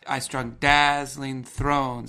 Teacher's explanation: two very strong stresses on the left hand side and two very strong stresses on the right hand side of each poetic line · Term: two strong beats